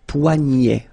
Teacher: this combination of ET at the end will basically open the sound, so you get poignet.